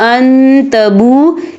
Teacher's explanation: إني أريد أن تبو، یا دیکھیں ان، یہاں نون ساکن ہے، نون ساکن کے بعد جو ہے تا آ رہا ہے، اور تا جو ہے اکفا کا ورڈ ہے تو ہم یہ اکفا کریں گے، نون ساکن کی آواز کو ناک میں چھپائیں گے۔ اور آگے دیکھیں ان تبو، یہاں پہ واو مدہ ہو رہا ہے، واو ساکن ہے، واو ساکن سے پہلے پیش ہے اور اس پر مد ہے، یہ مد جو ہے مد متصل ہے، اس کی مقدار 4 عدد کے برابر ہے، ٹھیک ہے، تو ہم اسے 4 عدد کے برابر کھینچ کے پڑھیں گے۔